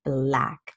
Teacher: the vowel sound in black or you have to open up your mouth a little bit more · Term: crocodile sound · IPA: / blæk /